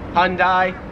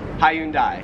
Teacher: Americans make it like two syllables, like Hyundai. Australians, three syllables